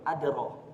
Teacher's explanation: di dal sukun ini atau dal mati ini jangan ditahan pentalannya, biarin aja dia mental. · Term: qalqalah